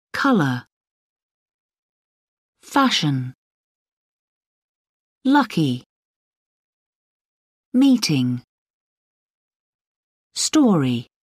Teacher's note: Stress on the first syllable